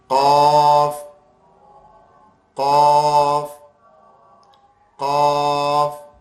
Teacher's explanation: ये बिल्कुल जबान की जड़ और तालू से मिलकर अदा होता है। जबान की जो जड़ है ना जहां से जबान शुरू होती है वहां से ये अदा होता है। · زبان کی جو جڑ ہے نا جہاں سے زبان شروع ہوتی ہے وہاں سے یہ ادا ہوتا ہے